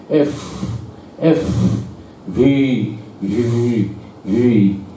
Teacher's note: ইংরেজি এফ আর ভির বেলায় ঠোঁট দুটো বন্ধ হয় না, ঠোঁটের সঙ্গে দাঁত, উপরের পাটির দাঁত লাগে নিচের ঠোঁটের সঙ্গে, একটুখানি হাওয়া, এক চিলতে হাওয়া ওই ফাঁক দিয়ে বেরোয়